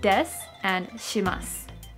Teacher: When you see the vowel U in su appearing at the end of a word, the vowel U becomes silent.